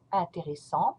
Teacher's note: This adjective ends with a T in the masculine form and it becomes intéressant. Don't pronounce the T, you stop at en, and make the sound en